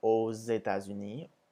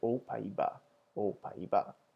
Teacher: Finally, with plural countries, we use AUX, which is pronounced as O, but when it comes before a vowel, you make the Z sound. So here we have aux États-Unis, but remembering back to the word for the Netherlands, we would say aux Pays-Bas, aux Pays-Bas.